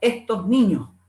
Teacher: Ropero Núñez recoge unos estudios de Moreno y Agudo del 2012 que dice expresiones culturales andaluzas y dice así: la forma del habla andaluza es la aspiración de la S implosiva al final de la sílaba